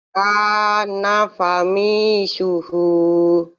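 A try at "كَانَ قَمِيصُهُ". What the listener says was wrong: Bukan fa nih Bu, titiknya 2, titiknya 2. Kana qamisuhu.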